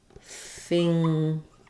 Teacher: so if I look up finger I'll see I have finger I have the NG sound plus the G sound